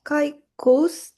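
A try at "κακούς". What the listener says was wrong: 까이가 아니죠? 까죠, 그냥 까. 네, 까꾸스 맞습니다.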